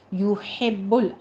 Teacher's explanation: یحب ہونٹوں کو گول کیجئے، یحب ہا وسط حلق سے باریک ادا کرنا ہے